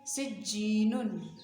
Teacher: سین کو باریک اور جیم کے ساتھ ملائیں گے. سجی، جیم یا زیر جی مد اصلی ہے، ایک الف کے برابر کھینچ کر پڑھیں گے.